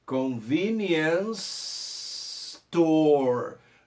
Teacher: Juntando esse som do convenience com o som do store, faz uma coisa só